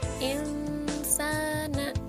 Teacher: ini hukum bacaannya adalah ikhfa atau dibaca samar, karena ada huruf nun sukun bertemu dengan huruf sin